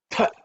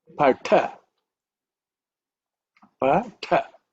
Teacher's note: the second letter in the ta varga, which that means you have to give some extra air